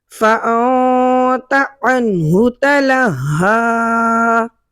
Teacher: فَأَنْتَ جو میں نے یہاں پر اخفا کیا ہے، کیونکہ نون ساکن کے فوراً بعد تا حروف اخفا میں سے آ رہا ہے اس کلمے کے اندر۔